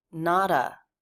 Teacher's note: it's a flap T links into the schwa